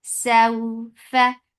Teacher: This is wow lean. So make it soft and make it two counts long.